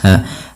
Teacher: Kemudian berfal ahlakna ha yang dia sukun ini sifatnya ada sifat hamesnya ya hamslak. Nah, dan ha di sini juga ada yang kita namakan dengan sifat rakhawah mengalirnya nafas